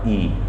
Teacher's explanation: ई जब आप बोलो तो देखो आपकी जीभ सामने साइड से, ये जो सामने का हिस्सा है हल्का सा उठेगा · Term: अग्र स्वर